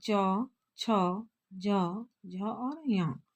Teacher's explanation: चौवर्ग, जिसको तालव्य भी बोला जाता है, जिसको तालु के द्वारा च, छ, ज, झ या जीभ, यानी कि जो जीभ है हमारी वो तालु में सटती है, जिसके बाद इसका उच्चारण होता